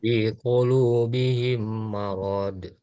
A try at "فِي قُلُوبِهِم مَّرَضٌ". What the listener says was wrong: Itu masih panjang. Marod. Marod. Bukan marod, tapi marod. Jangan ada de-nya. Karena ini bukan huruf dal. Ini huruf dod. Huruf dod.